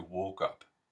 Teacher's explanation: the long o which I'm representing with a capital O here um goes really far forward so that it's almost like an ooh but but not quite so think oo say o is what I say to myself